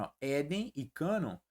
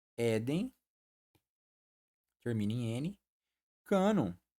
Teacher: Éden e cânon, a sílaba tônica é a primeira.